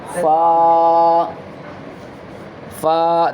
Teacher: یہ light letter ہے, اس کو لائٹ کر کے پڑھیں گے, ترقیق کریں گے, تفخیم نہیں کریں گے. یہ حروف مستعلیہ میں سے نہیں ہے.